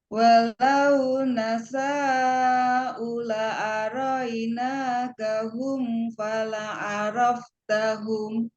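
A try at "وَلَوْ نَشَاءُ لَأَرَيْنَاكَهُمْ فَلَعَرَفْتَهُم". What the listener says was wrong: Nah, sepertinya sya-nya kurang panjang, Bu. Coba agak panjang sedikit. Walau nasya'u la'a.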